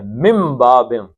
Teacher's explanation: من کی بجائے آپ میم پڑھیں گے یہاں پہ کیونکہ نون ساکن کے بعد با آ گیا